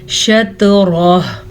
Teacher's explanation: त्वा के ऊपर साकिन है तो त्वा पे कलकला होगा, रॉ को पुर पढ़ेंगे, रॉ पे ज़बर की वजह से, और वक्फ हो गया तो हा साकिन हो जाएगी, हा ख़त्म नहीं होगी।